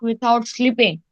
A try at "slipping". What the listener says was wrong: Slipping, not sleeping better. It's slipping.